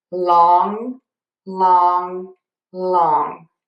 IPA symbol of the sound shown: lɔŋ